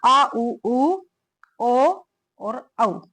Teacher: और पश्चात स्वर, ये भी पश्चात का मतलब पीछे, जो जीभ के पीछे वाला भाग है, बिल्कुल पीछे वाला भाग है, उससे बोले जाते हैं